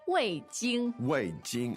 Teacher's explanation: Wei Jing, and it's fourth tone, first tone.